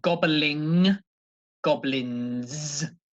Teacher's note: the N, the letter N there with no G, comes from the front, comes from the tongue and the teeth.